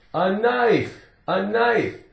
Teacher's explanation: The K is silent. All you hear is N, N, N, N.